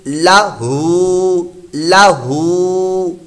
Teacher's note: ہا الٹا پیش ہو، اس کو لمبا کرنا ہے کیونکہ یہ کھڑی حرکات میں سے ہے الٹا پیش، تو اس کو ہم نے لمبا کر کے پڑھا، تو یہ بنا لاہو.